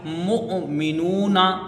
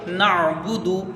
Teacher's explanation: حمزہ کو جھٹکے سے پڑھا جائے گا اور عین کو بغیر جھٹکے کے پڑھا جائے گا